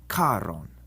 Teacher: in Latin, the CH is like a C with a breath of air after it, like the CH in character. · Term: aspirated consonants